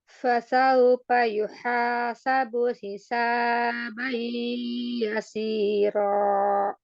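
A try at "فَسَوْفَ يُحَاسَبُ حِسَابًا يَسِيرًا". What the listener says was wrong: Hisaba sedikit pemanjang ya, dua harakatnya kelebihan. Kemudian fasaufa, huruf fa-nya dijelaskan. Fasaufa yuhasabu hisaban yasira.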